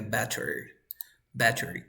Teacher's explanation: T between two vowel sounds. You pronounce like R.